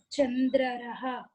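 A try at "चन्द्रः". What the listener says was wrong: Chandraraha. It's a mistake. Okay. To be Chandraha.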